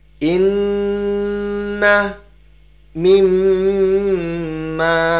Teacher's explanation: Hanya nun dan mim yang memiliki shaddah—keduanya memiliki bunyi sengau. Jadi kita harus menahannya selama dua ketukan. · Terdapat bunyi sengau dan ditahan selama dua ketukan.